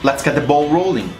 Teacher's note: Stress is placed on ball and a little bit more on rolling.